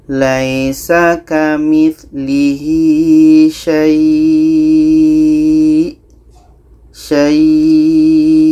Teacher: Jadi ini hukumnya mad lain. Cara bacanya ini kita panjangkan minimal 2 harkat baru matikan huruf yang terakhir.